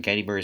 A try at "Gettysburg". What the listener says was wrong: I love how you butchered Gettysburg so hard. You said Gettysburgs.